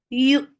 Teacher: Attach with hamza. Hamza will get sifa of shidda. So the sound should stop very abruptly.